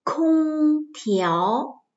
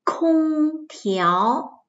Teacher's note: Cả hai âm tiết này đều bật hơi